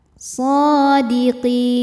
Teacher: Karena shad berharakat fathah panjang. Cara bacanya panjang dua harakat. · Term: mad thobi'i muqaddar, mad tabi'i muqaddar